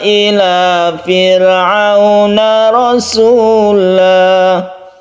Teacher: kemudian fir'auna roknya dibaca tipis.